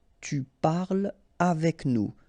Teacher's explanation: no liaison here between parle and avec